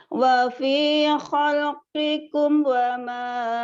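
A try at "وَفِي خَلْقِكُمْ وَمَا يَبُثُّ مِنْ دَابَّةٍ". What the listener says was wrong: komnya itu idhar, nggak boleh buru-buru. Jadi wafi khalqikum nggak boleh. Selesaikan pengucapan mimnya. Wafi wafi khalqikum wa ma yabuthu min dabbah. Jangan buru-buru ya.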